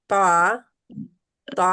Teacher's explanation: محیطا يعملون يعملون محیطا. طا طا موٹا محیط بھی ہے اور لمبا بھی ہے. طا دو الف کے برابر